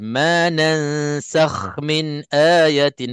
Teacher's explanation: maka kha hurufnya huruf yang tebal. Bila kita tebalkannya, insya-Allah dia tak bertukar dengan huruf lain.